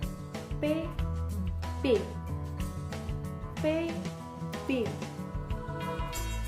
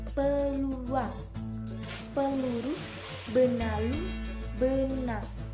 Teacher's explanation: P dan B adalah huruf konsonan yang diproduksi dengan cara udara yang dikeluarkan untuk menghasilkan kedua bunyi ini dihentikan di daerah bibir